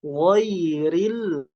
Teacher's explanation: ada huruf ya sukun yang didahului harokat fathah, itu ada huruf lin ya, jadi nggak boleh ditekan.